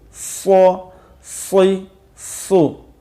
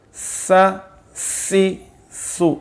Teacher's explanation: صاد کو تھوڑا سا پر پڑھیں گے اور سین کے اندر جو ہے باریکی ہے · اب دیکھیں کہ جو سو، اس کی آواز بھی سین سے ملتی جلتی ہے، جیسے سین زبر سا اور صاد زبر سو۔ اب اگر صاد کو موٹا پر کر کے نہیں پڑھیں گے تو وہ سین کی آواز ہی لگے گا